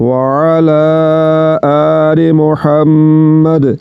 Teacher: دال کو جھٹکے کے ساتھ ادا کریں گے کیونکہ دال یہ حروف قلقلہ میں سے ہے، تو حروف قلقلہ کو جھٹکے کے ساتھ ادا کیا جاتا ہے۔